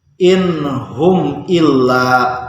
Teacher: Kalau izhar karena ini bertemu nun mati bertemu ha, maka membacanya in hum illa. Nun matinya dibacanya jelas.